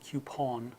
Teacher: the coupon in British English is a little more rounded of a sound